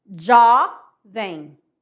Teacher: Então, o Jô é tônica e o vem é átona.